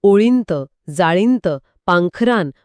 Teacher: हे वाचताना खूप नाकातून उच्चारल्यासारखं वाटत होतं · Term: अनुस्वार